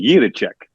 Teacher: Now, if you really want to say it like a Czech, okay, it would be Juracek. Like you kind of roll that R a little bit.